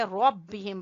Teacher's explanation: را کو پر پڑھیں گے اور ہا کو میم سے ملاتے ہوئے غنہ کریں گے. ادغام شفوی ہے.